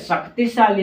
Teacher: इसका उच्चारण तालू से होता है किससे होता है तालू से होता है जिसके कारण इसे तालव्य श कहते हैं